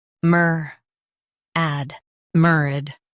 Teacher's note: Stress mer and keep ad soft.